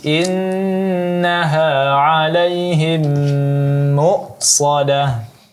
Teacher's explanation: jangan lupa nun yang ada tasdidnya dilamakan lagi.